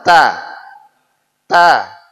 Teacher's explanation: a yang mudah dulu yang Ta duluah ini rileks lidah rileks ujung lidah kita naik ke atas posisi dia antara gusi dan gigi nempel